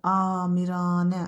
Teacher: A-ların hər ikisi uzun tələffüz olunacaq. Malikanə sözündə də malikanə, hər iki A uzun tələffüz olunacaq.